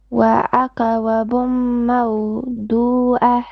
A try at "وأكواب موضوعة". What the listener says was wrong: Okay, don't make qalqal on the kaf. وأكواب Your ain needs more clarity, okay? موضوعة. You're stretching a lot of your short vowels. I've noticed you stretch them a bit, so you need to correct these things, okay?